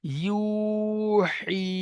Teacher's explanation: ইয়া সাকিন তার ডান দিকে জের ইয়া মাদ্দা, ইয়া মাদ্দাকে এক আলিফ পরিমাণ টান দিয়ে পড়তে হবে।